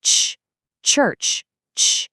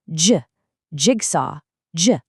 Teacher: we completely stop the air and then push it out really quickly. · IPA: /tʃ/, /dʒ/